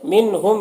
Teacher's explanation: نون ساکن کے بعد ہا ہے، حروف حلقی میں سے، یہاں پر اظہار ہوگا، نون کو ظاہر کر کے جلد پڑھیں گے